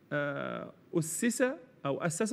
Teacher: لابد من اظهار السين اذا تكررت لان الحرف اذا تكرر يصبح في في شيء من الصعوبه في تبيينه